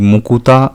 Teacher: সেটি থেকে যখন আমরা তৈরি করছি মুকুতা শব্দটি তখনও সেই শব্দে ক এবং ত এই যুক্ত ব্যঞ্জনের মাঝখানে হ্রস্ব উ স্বরধ্বনির এর আগমন ঘটেছে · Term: স্বরাগম, মধ্য স্বরাগম